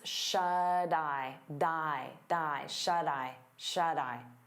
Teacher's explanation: we turn that T into a soft D because it's between vowels